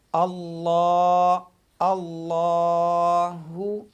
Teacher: لفظ اللہ کا جو لام ہے اس سے پہلے حرف کے اوپر زبر ہے تو ہم لوگ اس کو موٹا ریڈ کریں گے۔